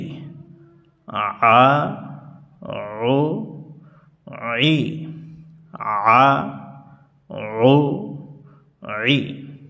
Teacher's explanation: হলকের মধ্য থেকে একটু চাপানো আওয়াজ হবে, কণ্ঠনালীর উপরে একটু চাপ দিয়ে পড়তে হবে। যেমন আইন জবর আ, আইন পেশ উ, আইন জের ই, আ উ ই, আ উ ই।